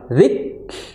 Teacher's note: zal makhrajnya adalah di ujung lidah bertemu dengan apa, ujung gigi seri atas